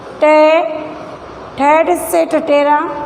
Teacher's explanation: जीवा मुख के ऊपरी दांतों के अंदर जो ऊपर का हिस्सा होता है, मसूड़ों वाला जो खुरदरा भाग होता है, उसे स्पर्श करती है, तो उन ध्वनियों को मूर्धन्य या मुर्दा ध्वनि कहा जाता है। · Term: मूर्धन्य ध्वनियाँ